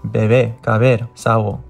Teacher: However, in all other places, it is pronounced like the soft V sound. Kind of like the V sound, but without using your teeth, only your lips.